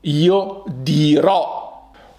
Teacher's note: Beware of the final accents and the end of the words, so you must stress those vowels and spike up the pitch to make it out clear that the tone of the word is spiking up to the final vowel